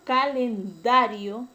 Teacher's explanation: El término calendario es grave porque la mayor fuerza de voz está en la penúltima sílaba y no se tilda porque termina en una vocal.